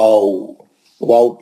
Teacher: होठ एक दूसरे से मिलते नहीं इसमें। लेकिन होठों के दरमियान जो है गोल दायरा रहता और होठों को अपने चेहरे से अपने मुंह से जरा दूर ले आ के खींच के आगे की तरफ आप पढ़िए उसको आ है ना आ वाऊ ये वाऊ का मखरज है।